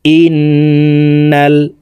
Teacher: এই হামজা তাসদিদওয়ালা নুনের সাথে নাকের বাসি থেকে গুন্নাহ করে পড়ব। ইন, নুন লাম জবর নাল, ইন্নাল। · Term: ওয়াজিব গুন্নাহ